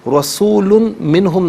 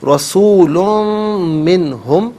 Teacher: میم کی آواز کو غننے کے ساتھ ادا کریں گے